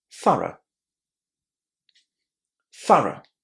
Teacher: this word is pronounced as th at the beginning with a short a th and then all of these letters here at the end are just two sounds.